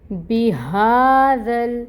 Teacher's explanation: پھر با کے نیچے دیکھیں، زیر کی حرکت ہے، 1 کاؤنٹ، ہا کے اوپر کھڑی مد ہے، 2 کاؤنٹس لمبا پڑھیں گے، اور اس ذال کو نرمی سے پڑھیں گے، اس کے اوپر فتحہ کی حرکت ہے، اس ذال کو لام کے ساتھ ملائیں گے۔